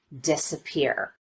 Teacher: And the change in pitch on the vowel is not quite as noticeable. An example of secondary stress would be the first syllable in this word, disappear.